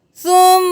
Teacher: میم کے اوپر تشدید ہے تو غنہ کریں گے.